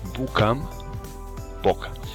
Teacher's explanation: la U breve evoluciona a O